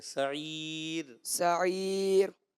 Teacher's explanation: سعیر میں را کو باریک رکھیں